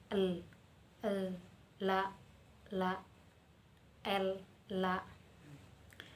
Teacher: La dan al sama-sama dari samping, bunyi dari samping atau lateral.